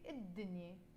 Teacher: But we don't pronounce الدنيا because it starts with the letter dal, and the letter dal is a sun letter, حرف شمسي. And because it's a حرف شمسي, which is a sun letter, we drop the pronunciation of the lam. Instead of saying الدنيا, the world, we will say الدنيا.